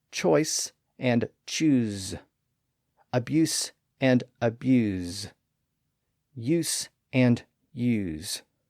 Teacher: the final S in some of these words became a voiced Z sound when a verbal suffix was added